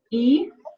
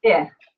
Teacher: The tongue lowers and backs a little bit, and then the shape of the mouth becomes a little less spread, but it is so very subtle.